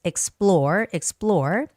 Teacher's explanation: And the word explore, this word also has the second syllable stress